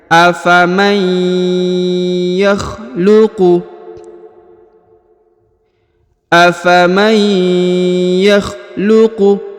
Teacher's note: Huruf nun sukun bertemu dengan ya bertasdid. Maka huruf nunnya menghilang melebur ke huruf ya, lalu ditahan dan ditekan ya.